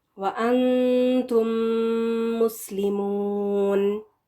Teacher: میم کو 2 حرکات کے برابر کھینچ کر لمبا کر کے پڑھیں گے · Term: میم کا غنہ